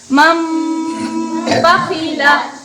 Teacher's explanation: نون ساکن کے بعد با آ جائے، نون کو میم سے بدل کر غنہ اور اخفا کے ساتھ پڑھیں گے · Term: اقلاب